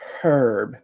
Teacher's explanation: as British people say, herb, because they pronounce the H. In American English, we do not pronounce the H in herb.